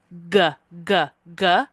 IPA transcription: g